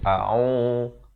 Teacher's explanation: hamzah makhraj di pangkal kerongkong, ain di pertengahan kerongkong